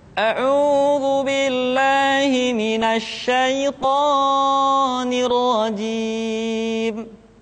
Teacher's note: diucapkan dengan harakat yang tidak tepat contohnya auzubillahiminasyaitanirjim Perhatikan kalimat thi secara hukum thi harus dibaca dengan dua harakat tapi seringkali kita ucapkan melebihi dari kadar dua harakat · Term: mad asli